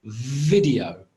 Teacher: fricative so I forced some air out and I say video so it's voiced because there's vibration it's fricative